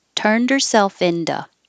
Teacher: instead of two the t will change to a d